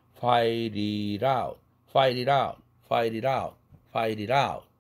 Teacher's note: t가 두 개의 t가 다 링킹 되면서 플랩 됩니다